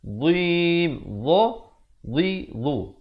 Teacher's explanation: Makhrajnya itu hujung lidah kita mesti keluar macam huruf zal, cuma bunyinya tebal